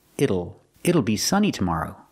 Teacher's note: We hear the pronunciation with it will contraction, it'll. The T changes to a fast D.